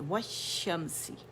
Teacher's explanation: میم ایک دفعہ پڑھا جائے گا، اظہار کریں گے میم کا